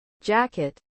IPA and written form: ˈdʒækɪt (jacket)